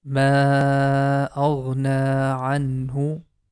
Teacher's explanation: we are going to make the ma sound for 4 counts